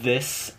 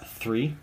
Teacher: the only difference between the two sounds are the voicing in the larynx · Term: th sounds